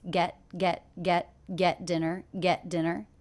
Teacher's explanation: the T here is a stop T I don't release it